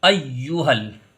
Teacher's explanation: हा को यहाँ लाम में मिला देंगे। अय्युहल, यहाँ पर या मद्दा है।